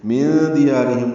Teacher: نون ساکن کے بعد دال آنے کی وجہ سے اخفاء ہے ، یا کو 2 حرکات لمبا کرنا ہے، را باریک پڑھنی